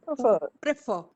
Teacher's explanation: don't stress the first syllable here.